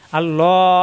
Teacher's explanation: এই আল্লাহ শব্দ ল মোটা হবে